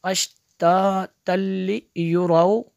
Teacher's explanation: तनवीन के बाद लाम है और रुफ़े मालून में से, तो यहाँ पे इदग़ाम होगा, लेकिन लाम और रा में गुन्ना नहीं करते।